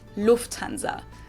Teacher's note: In English, people usually say Lufthansa, but in German, we say Lufthansa. So the emphasis is on the first syllable.